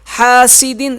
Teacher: یہ سین ہے، اسے صاف پڑھیں گے، سیٹی کے ساتھ پڑھیں گے، یہاں غنہ نہیں کریں گے، حاسدن غنہ نہیں کریں گے، حاسدن اذا، کیونکہ تنوین کے آگے اگر حروف حلقی میں سے کوئی حرف آ جائے، یعنی کہ حمزہ، ہا، عین، ہا، غین، خا، یہ 6 حروف حلقی کہلاتے ہیں، تو وہاں غنہ نہیں کریں گے۔